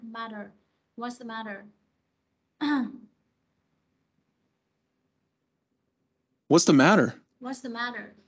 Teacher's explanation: nó đứng giữa hai nguyên âm này sẽ đổi thành chữ đờ các bạn ha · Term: anh Mỹ